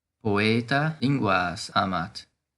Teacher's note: la A se hizo larga, porque el caso nominativo es solo lingua